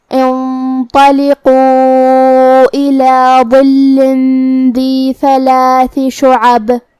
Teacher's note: کلمت ظل میں یہاں حرف الضا ہے. ضا کو ہم زبان کے سر اور اوپر والے دانتوں کے اندرونی کناروں سے ادا کریں گے. ضا حروف التفخیم میں سے بھی ہے، لہذا ہمیں حرف الضا کو بھاری آواز میں پڑھنا ہے. پھر حرف اللام ہے اور اس پہ تشدید ہے، لہذا 2 حرف کے برابر ہم لام کو پڑھیں گے جو کہ اس کے نیچے تنوین زیر ہے.